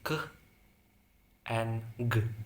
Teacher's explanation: Next is velar, sounds made using the back of the tongue and the soft palate, such as k and g.